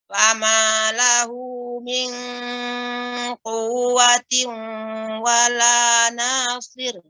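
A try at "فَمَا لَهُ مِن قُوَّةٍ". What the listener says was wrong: Ya, kemudian ikhfa pada huruf qaf, min ya lebih dalam lagi, min demikian.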